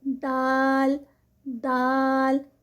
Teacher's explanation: जुबान की नोक है वो ऊपर वाले जो हमारे मसूड़े हैं ऊपर वाले दांतों के पीछे जो मसूड़े हैं वहां पर जुबान जो है वह हमारी टच होगी